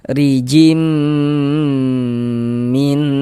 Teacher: Jangan baca rijin tapi rim. Kemudian di bagian jimnya itu suaranya itu kita tahan, kita panjangkan sejenak kira-kira sepanjang dua harakat. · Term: idgham bighunah